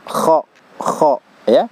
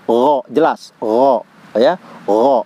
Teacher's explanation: Tapi kalau dia huruf huruf gha itu huruf jahar, tidak ada udara yang keluar. Jadi udara tertahan ya, tertahannya udara.